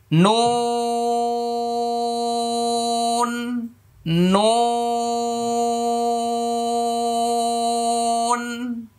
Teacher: নুনের শুরুতে ঠোঁট গোল হবে শেষে ফাঁকা হয়ে যাবে কারণ শুরুতে পেশ আসছে মনে রাখতে হবে যেখানেই পেশ থাকবে মানে